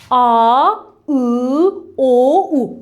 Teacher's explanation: Baxın, dilimiz çəkildi arxaya və səs qalın çıxdı. Deməli, sait yarandı dilin arxasında. · Biz qalın saitləri tələffüz edən zaman dil o üfuqi xətt üzrə arxaya çəkilmiş olur və saitlər dilin arxasında yaranır və səs qalın çıxır